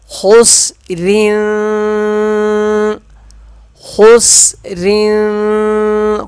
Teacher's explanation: خاسین پیش خس، را دو زیر رین، را پتلا پڑھا جائے گا، خس رین، خس رین، خا موٹا پڑھیں گے، خس رین۔